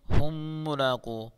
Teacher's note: میم ساکن کے بعد دوسرا میم آ گیا ہے تو یہاں میم ساکن کا ادغام ہوگا، گنہ کے ساتھ پڑھیں گے